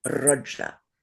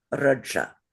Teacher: it's very rolled. So, it's more like a Russian or a Ukrainian R and a Spanish R. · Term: rolled R